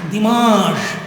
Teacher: N is not pronounced, it is nasal, it becomes nasal.